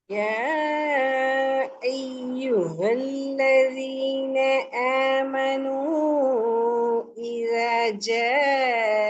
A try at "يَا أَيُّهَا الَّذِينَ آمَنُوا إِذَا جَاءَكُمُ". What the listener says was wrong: آمنوا ஏன் நீட்ட மாட்டேங்கிறீங்க?